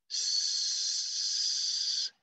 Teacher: And it includes this sound, for example, s. So it is unvoiced, s, and it is alveolar, s, meaning the tip of my tongue is on the alveolar ridge, and it's called a sibilant.